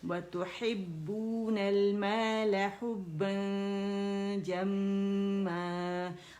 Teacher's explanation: حرف اخفا کو میں نے دیکھا جیم ہے تو میں نے با کی زبر ادا کی اور جو نون تھا اس کو چھپایا، لیکن غنہ کرتے ہوئے میں رائٹ اوے جیم کے مخرج پہ گئی ہوں، وسط اللسان پر، اور جیم کے لیے آپ کو پتہ ہے غار میں لگتی ہے تو اس کے جب مخرج کے میں قریب ہوئی ہوں اسے میں نے ٹچ نہیں کیا، جب اخفا پورا ہوا تو پھر میں نے جیم کو ٹچ کیا، ٹھیک ہے۔